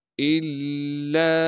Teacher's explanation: وَمَا يَذْكُرُونَ إِلَّا أَن يَشَاءَ اللَّهُ، حمزہ کو لام سے ملانا ہے کیونکہ لام پر تشدید ہے۔ لام پر تشدید ہونے کی وجہ سے تھوڑا سا ٹھہراؤ رکھیں گے۔ لام کے بعد الف مدہ اور الف مدہ کے اوپر چھوٹی مد ہونے کی وجہ سے لام کو 3 الف کے مقدار کھینچیں گے۔